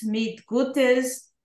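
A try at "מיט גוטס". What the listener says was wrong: mit Guts, not Gutes, mit Guts. Aber צריך להגיד Guts.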